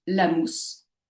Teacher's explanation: Si je prends l'énoncé, la mousse, je vais avoir un mot phonétique, la mousse, avec donc mousse, la syllabe mousse, qui va être accentuée